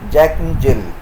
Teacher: the unaccented syllables are squeezed that is they are spoken in their weak forms